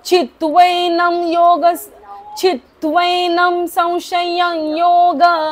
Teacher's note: न च्या वरचा अनुस्वार म बोलायचा आहे